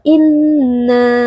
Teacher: Nun bertasdid wajib dibaca dengan dengung yang dipanjangkan